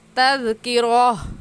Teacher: گول تا پر جب وقف کرتے ہیں تو وہ ہا بن جاتی ہے، اس لیے کہیں گے تذکرہ.